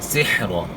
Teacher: سحر ہا کی آواز جو ہے گلے کے درمیان سے نکالنی ہے، سیرا نہیں پڑھنا ہے